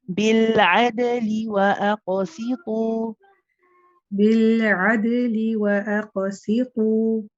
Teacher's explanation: with the dal here in بالعدل, the dal is a shidda letter, so I want to put a bit more strength into it